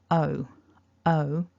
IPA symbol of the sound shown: əʊ